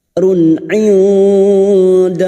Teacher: Run indallahi, nun sukun bertemu dal, ikfa hakiki. Kita samarkan bunyi nun sukun dan mendengung selama 3 harokat.